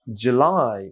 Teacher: July এখানে একটা stress আছে, সেকেন্ড মানে লাস্ট সিলেবল ইজ July